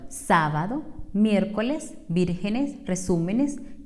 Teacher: acento de intensidad en la ante penúltima sílaba · las palabras esdrújulas tienen la sílaba tónica en la antepenúltima sílaba